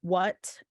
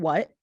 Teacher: the first one is aspirated the second one is actually I think glottalized but it's just I'm really just coding aspirated or not aspirated